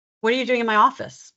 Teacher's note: So we go a little higher in pitch, a little higher in volume, a little slower